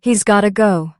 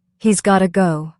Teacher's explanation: Got to becomes gotta. And this happens all the time in casual speech.